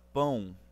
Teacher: esse O tem som de W